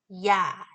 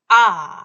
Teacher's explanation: 놓고 발음해 보시면 변합니다 그래서 야 해 보시면 아 할 때는 변하지 않지만 야 하는 동안은 혀의 위치 즉 입이 벌어지죠 개구도 커지 죠 자 이걸 우리가 이중 모음이라고 하고요 자이 이중